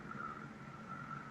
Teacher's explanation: Bring the chords together like you're going to make a glottal noise, and then inhale slightly, but engage your diaphragm. It's a buzz, and it's going to sound like a vocal fry, but it's on an inhale.